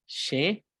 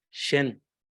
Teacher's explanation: So shen, shen, and it never touches the teeth. So there is a more open sound here, shen, instead of a closed sound, shen. So shen, shen, shenki is a more open sound, like a vowel sound, rather than shen, where you see that the sound is more closed.